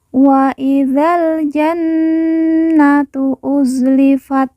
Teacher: Nun yang bertasjid kita baca ditekan ditahan dua harakat dan didengungkan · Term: Nun yang bertasydid